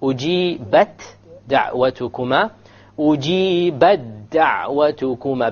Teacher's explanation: Because we've merged it, there is no qalqala. Okay? And the dal has a fatha on it anyway, so there could not be a qalqala.